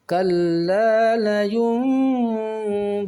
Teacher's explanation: sebelum membaca huruf ba ketika berhadapan dengan nun sukun, maka dibunyikan huruf mim terlebih dahulu baru membunyikan huruf ba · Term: bacaan iqlab